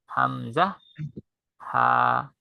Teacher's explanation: হচ্ছে হামজা হামজা আর এই হরফের মাখরাজ বা উচ্চারণ স্থান একই হামজা এর আর হা এর উচ্চারণ স্থান হচ্ছে কণ্ঠনালীর শুরু থেকে